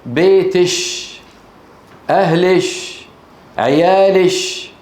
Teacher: من العرب من يجعل الكاف المؤنثه المخاطبه شين